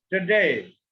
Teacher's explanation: Today. We have to give a stress on day. Second syllable.